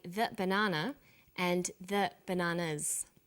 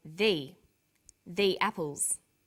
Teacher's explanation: there is a difference in pronunciation though when the comes before a vowel sound we say thee the apples so the before vowel sounds and the before consonant